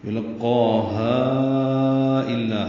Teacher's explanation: ہا کو 4 حرکات لمبا کیا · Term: مد منفصل